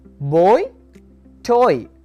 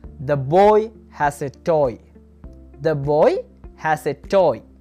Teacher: Oi as in boy toy. From o to e.